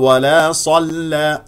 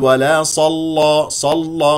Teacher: لا تفخم اللام هذه اللام مرققه